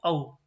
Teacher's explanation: ओ और औ कौन सी होती है हमारी कंठ्योष्ठ